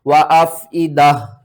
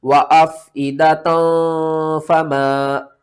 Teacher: وقف کی صورت میں ہا پڑھا جائے گا اور واصل کی صورت میں تا پڑھا جائے گا